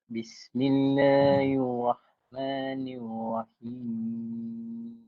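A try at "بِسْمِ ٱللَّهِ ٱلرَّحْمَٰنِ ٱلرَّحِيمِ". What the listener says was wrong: Bila sampai hujung hilang lah suara tuan. Boleh ulang sekali lagi. Saya nak dengar bahagian mim tu. Kat Una tu saya nak dengar.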